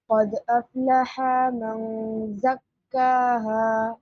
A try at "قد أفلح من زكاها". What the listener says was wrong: No stretching, please.